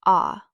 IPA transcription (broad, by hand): ɑ